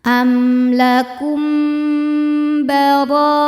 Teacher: Selanjutnya ada hukum ikhfa syafawi, karena mim sukun menghadapi huruf ba. Cara bacanya mim sukun dibaca berdengung ya.